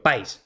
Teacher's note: sería simplemente un diptongo y se pronunciaría pais en una sola sílaba. Pero no, yo no pronuncio pais, pronuncio país.